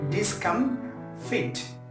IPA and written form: dɪsˈkʌmfɪt (Discomfit)